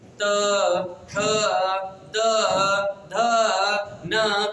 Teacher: जब इसको पढ़ते हैं तो हमारी जीभ दांत को स्पर्श करती है